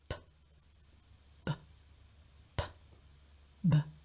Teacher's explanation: what you're feeling for is you will feel a slight voicing, a slight vibration on the B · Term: voiced bilabial plosive